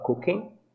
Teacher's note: Percebam que o G final não é pronunciado na palavra